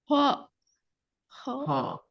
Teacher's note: அந்த காருகின்ற அந்த கரகரப்பான டோனோட வானத்தை நோக்கி ஓதப்படணும் மேல் நோக்கியதாக உச்சரிக்கணும் நாவினுடைய இறுதிப்பகுதி மட்டும் மேலுக்கு தூக்கணும் நாவினுடைய இறுதி பகுதி தொண்டையோட தொண்டையோட சேர்ந்தாதான் அந்த காரல் சரியாக வரும்